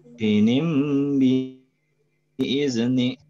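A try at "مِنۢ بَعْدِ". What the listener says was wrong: Ini panjang hi-nya. Hinim biizni.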